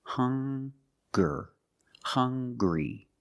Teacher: They also make the same sound with the nasal sound and the hard g.